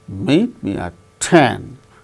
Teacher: 10 is the tonic syllable which gains more importance than meet